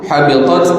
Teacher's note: Dan ta ni bunyi desisnya itu kuat ketika mana mati.